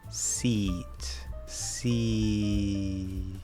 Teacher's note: you have to stop that voice right before you get into the T, and so it sort of shortens the amount of time we spend on that vowel.